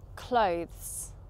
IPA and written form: kləʊ(ð)z (clothes)